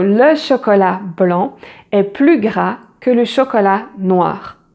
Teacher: So here, even if the meaning is positive, if it's adding something, it means more, you do not pronounce the final S in this case